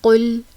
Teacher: قل اعوذ برب الفلق، قاف پیش لام قل، قاف دو نقطوں والی کاف، اس کو موٹا پڑھیں گے کیونکہ یہ حروف مستعلیہ میں سے ہے